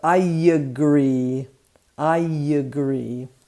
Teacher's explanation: the i and the a are connected with the j as a u sound so i agree i agree actually yes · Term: intrusion